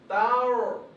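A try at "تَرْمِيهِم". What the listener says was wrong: So just a reminder, the one that should be heavy is huruf ra, not huruf ta. So ta must maintain light. Then go into a heavy sound of huruf ra. Tar. Tar. So the gesture that helps is you smile, then you pout a bit for huruf ra.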